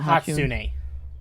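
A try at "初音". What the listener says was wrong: No, it's Hatsune, not Hatsuna. It's Hatsune. Hatsune.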